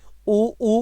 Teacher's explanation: ओष्ठों का आकार गोल हो रहा है। और गोल होकर के ओष्ठों के आंतरिक भाग को प्राणवायु स्पर्श करती है।